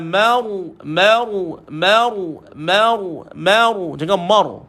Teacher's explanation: huruf sebelumnya baris di atas maka ra dibaca dengan tebal